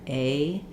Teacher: The A starts a little higher, A, and it glides up.